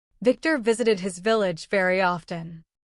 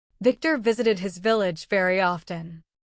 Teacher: It's like you're gently biting your bottom lip. Air comes out between your teeth and lip to make the V sound.